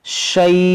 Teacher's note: ان اللہ لا یخفی علیہ شیء، یہاں پر ہماری سانس ٹوٹ گئی، تو اس دو پیش کو ہم ساکن کریں گے، اور پھر یہاں مد لین عارض کریں گے